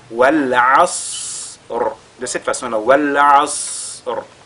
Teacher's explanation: le Sad, il a la caractéristique de Al-Hams. C'est-à-dire il y a l'écoulement de l'air qui se produit au moment de sa prononciation. Ce qui nous permettra d'allonger, n'est-ce pas, sa prononciation avant de lire la lettre Ra.